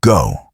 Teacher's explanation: Americans open the mouth wide for the vowel sound. Think about go. The lips round clearly.